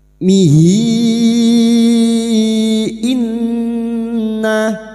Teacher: nun yang bertasdid gunna musyaddadah kita dengungkan selama 3 harokat